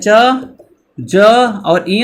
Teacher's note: च, ज और इय जो होगा वो हमारा किस में आ जाएगा, अल्प प्राण में आएगा